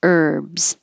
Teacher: don't say the H just start with the ER · Don't say the H. Herbs. If it's a man's name, it will start with an H and you say the H.